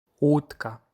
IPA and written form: wutka (łódka)